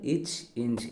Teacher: நாவின் இடைப்பகுதி நடு அன்னத்தின் இடைப்பகுதியை பொருந்துதால் பிறக்கும் எழுத்துக்கள்